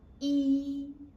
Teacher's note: E is high pitch and you need to keep at that high pitch. Cannot go up or go down. The common mistake is like people like to pronounce as E or E or E. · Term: first tone